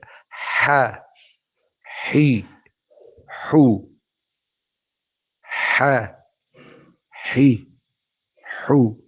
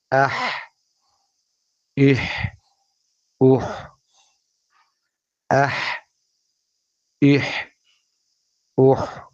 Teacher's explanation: جو ہا ہے وہ وسط حلق سے ادا ہوتا ہے